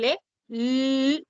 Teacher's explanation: Cuando haces el sonido de L, la lengua se apoya en la zona alveolar y el aire sale por los lados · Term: sonidos laterales